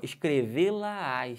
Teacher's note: perceberam que tem uma subida de Tom